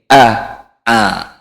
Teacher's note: a sedikit hanya sedikit sekali sedikit sekali ke huruf e-nya